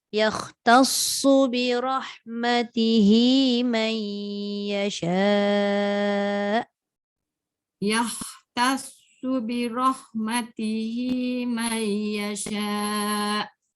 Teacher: Su jangan baca panjang. Su tidak ada huruf mat.